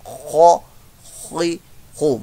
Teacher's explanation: खौ हलक के दरमियान वाले हिस्से से, इसको हलक के ऊपर वाले हिस्से से अदा करना है। खौ खी खू, मुस्तालिया लेटर है, पुर मोटा करके